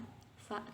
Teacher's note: Kemudian fa ini biasa, fa gitu kayak orang senyum. Bibir bawah bagian dalam bertemu dengan ujung gigi seri atas